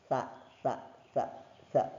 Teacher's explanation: Sa itu dia itu terletak di gigi. Nih kalau kita ngomong tuh sa sa sa sa kan geseran terus dia bersuara dan tipis juga